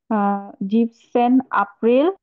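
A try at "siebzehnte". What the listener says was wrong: জিপসেন্টে। জিপসেন্টে, টে টে যুক্ত করবেন সাথে, জিপসেন্টে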